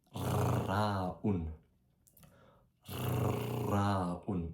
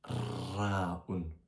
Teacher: Il faut faire vibrer la langue. Au lieu de faire avec la luette, faut faire vibrer la langue avec le palais. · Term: le ra en arabe